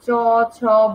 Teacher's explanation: উচ্চারণকালে জিহ্বা বা তালুর স্পর্শের পরপরই উভয়ের মধ্যে বায়ুর ঘর্ষণজাত ধ্বনি সৃষ্টি হয় বলে এগুলোকে বলা হয় ঘৃষ্ট ধ্বনি।